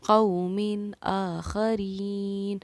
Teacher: تنوین کے بعد حروف حلقی میں سے حمزہ آ رہا ہے، اسی لیے ہم نے قومین پر کوئی ٹھہراؤ نہیں کیا، نون کو سمپل ظاہر کر اور آگے بڑھے، قومین آخرین۔